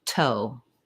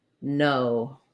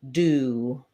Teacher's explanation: our tongue lifts behind it's on the alveolar Ridge that's the bumpy Ridge behind your teeth